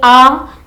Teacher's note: जब बोलेंगे आ तो जीभ क्या होती है? जीभ नीचे रहती है · जब जीभ नीचे आएगी, तालु के पास नीचे, तब मुख पूरा लगभग खुला हुआ रहता है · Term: विवृत स्वर, विवृत